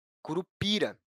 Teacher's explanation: No caso da palavra curupira, a sílaba tônica é a sílaba pi, que não possui acento. A sílaba pi é a sílaba mais forte.